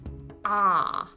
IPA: ɒ